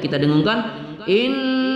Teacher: mim sukun pada izhar Safawi tidak kita dengungkan